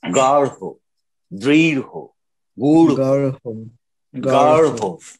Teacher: রয়ের সাথে একটা হ মিশ্রিত ধ্বনি আসবে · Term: ঢ বিন্দু র